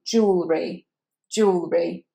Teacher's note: So that E is said as oo.